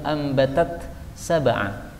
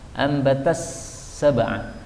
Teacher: Ambatas sab'a, idgham. Jadi taknya jadi hilang, lebur menjadi sin.